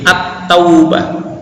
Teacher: ke dalam huruf-huruf Syamsiah yang posisinya setelah huruf lam dengan demikian bacaan lam sukun tadi akan langsung menghilang serta melebur dalam huruf Syamsiah yang ada di belakangnya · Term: Al Syamsiah